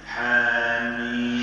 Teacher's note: الحا اعطوها حركتين فقط ما نزيد ما نقولش حا ولا و ثلاثه هما هي تمد